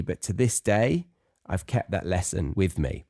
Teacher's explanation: that stress on to this day so it kind of goes up but it's there's a pause after the day and it's stressing